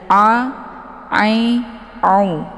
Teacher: Posisi makharijul huruf a ini letaknya di tenggorokan bagian tengah.